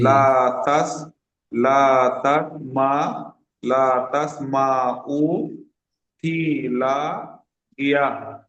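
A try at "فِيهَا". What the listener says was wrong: ফি লা নয়, ফি হা, এটি হলো হা। ফি হা আলিফ জাবার হা। ফি হা লাগিয়া।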